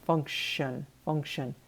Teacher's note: And in the pronunciation, you see that T-I-O-N. That T is making an SH sound.